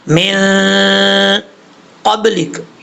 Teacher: یہاں پر قاف حروف اخفا میں سے ہے تو یہاں نون ساکن کا اخفا ہوگا، ایک الف کی مقدار غنہ کر کے پڑھیں گے. ایک الف جو ہوتا ہے وہ 2 حرکات کے برابر ہوتا ہے، یہ یاد رکھیے گا.